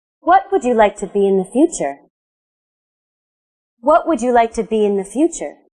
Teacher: my voice went down so this question has a falling intonation